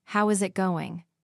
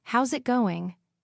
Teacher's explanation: Instead, "how is it going" becomes "how's it going?" The is disappears, and the final G in going often softens. This is called connected speech.